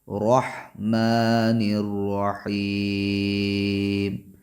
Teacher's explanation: کھڑا زبر یہ مد اصلی کے قائم مقام ہے، لہٰذا اس کو ایک الف کے برابر پڑھیں گے